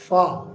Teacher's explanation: नीचे के होंठ का अंदर वाला हिस्सा, इस पर ऊपर के दांत लगते हैं, ऊपर के दांत और नीचे का होंठ, ये समझ ला ये नीचे का होंठ है, इसके अंदर की तरफ यूं ऊपर के दांत लगते हैं तो यहाँ से फ़ा निकलता है।